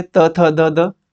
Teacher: त बोलते हैं तो जीभ हमारी टच होती है दांतों से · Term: त्वर्ग